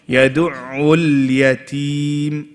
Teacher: Now the lam on the next word, guys, don't make it a qalqalah.